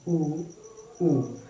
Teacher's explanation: मेरा उच्चारण करते समय मेरे दोनों होठ क्या हो रहे हैं, वो गोलाकार हो जा रहे हैं, ऊ। ये क्या है दोस्तों, ये ओष्ठ से यानी कि ओठों से उच्चरित हो रहे हैं।